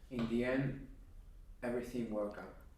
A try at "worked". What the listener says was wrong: Hay que enfatizar la ED porque viene detrás de una K. Y tiene que ser un sonido fuerte. Worked. Yo lo digo como si fuera una T. Worked. Si no, se pierde. Lo comes. And I didn't hear it.